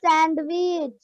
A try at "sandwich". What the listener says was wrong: It's not sandwich, it's sandwich. The D is silent in sandwich.